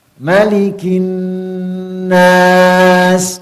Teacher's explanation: nun tasydid, mim tasydid, gunnahnya adalah gunnah akmalu ma yakun, yaitu gunnah yang paling sempurna. Ya. Ditahan, tidak boleh hanya sekedar seperti ini.